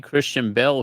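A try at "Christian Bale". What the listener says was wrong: It's not as good when you pronounce Bale as Bell.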